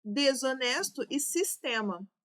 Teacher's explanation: O S tem som de Z, em desonesto, e o outro S tem som de S mesmo. E em sistema, está tudo com som de S.